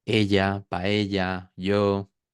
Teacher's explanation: no es una consonante en la que la lengua se pegue al paladar